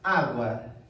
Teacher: diante de uma sílaba anterior com acento e além do mais estamos diante de um ditongo crescente em outras palavras de uma semivogal para uma vogal